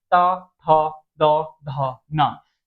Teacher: ये दंत मूल हो जाएगा मतलब दांत से होता है